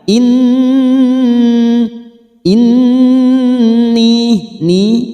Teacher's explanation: Nun yang bertasdid gunah musaddadah kita tekan selama tiga harakat kita dengungkan